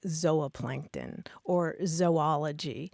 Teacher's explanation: the super traditional scientific pronunciation would be a long O sound